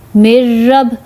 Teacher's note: اب نون پہ جزم ہے تو ہم نون کو نہیں ملائیں گے، میم کو را سے ملائیں گے، میم، را، زیر، مر، را، با، زبر، رب، مر رب۔ اب جب مر رب میں پڑھتی ہوں تو میرے ناک میں آواز نہیں جا رہی، غنہ نہیں ہو رہا